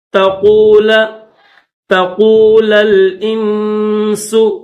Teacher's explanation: اللن تقول، تقول الانس، دو لام ہے، پہلا جو لام ہے اس کے اوپر زبر ہے، دوسرا جو لام ہے اس کے اوپر جزم ہے، تو پہلے لام کو دوسرے لام کے ساتھ ملائیں گے